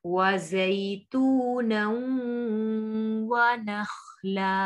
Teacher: وَزَيْتُونًا وَنَخْلًا, خا حروف مستعلیہ میں سے ہے, موٹا پڑیں گے